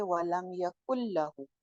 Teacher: तो किस तरह पढ़ेंगे, वलम यकुल्लहु, अब यहाँ मुकम्मल इदगाम हुआ, नून की आवाज खत्म हो गई, काफ की पेश को लाम के साथ डायरेक्टली ज्वाइन किया